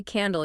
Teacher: you have to create a dark L sound. Your tongue drops down and back into your throat.